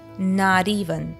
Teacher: Not even becomes not even with that flap t between the vowels sounding like duh.